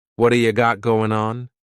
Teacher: We're going to drop that G at the end of the word going